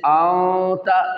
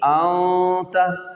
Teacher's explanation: इख्फा के माना होता है छुपाना, छुपा कर गुन्ना अदा करना नाक के बांसे से, सही है, जैसे आंता, इसमें ज़ुबान जो है मुअल्लक रहेगी, दरमियान में रहेगी, कहीं टच नहीं होगी, सही है, आंता।